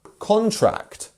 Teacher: if we actually wanted to put the stress on the first syllable, we would have contract